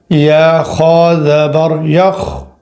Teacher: خا ہے تو یہاں پر آواز موٹا ہوگا